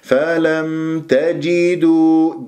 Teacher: اتي بالمخرج الشفوي والخيشومي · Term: ميم مظهرات